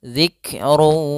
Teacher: masukkan dulu tanwinnya ke wau kemudian ditahan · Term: idgham naqis